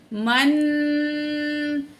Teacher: नून साकिन के बाद हरूफ इख्फा में से काफ आ गया है, नून की आवाज़ को नाक में छुपा कर पढ़ेंगे